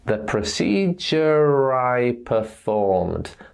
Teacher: letter R is a vowel sound I so in this case we pronounce the letter R to link those words together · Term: linking R